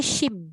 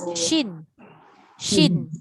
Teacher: Kenapa kena pakai sin dengan shin ni, belakang ni dua-dua nun. Jangan rapat bibir jadi mim